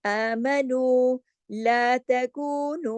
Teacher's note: दोनों के साथ वाव मद है, दोनों दो दो हरकत खींचेंगे। तमाम बारीक लेटर हैं।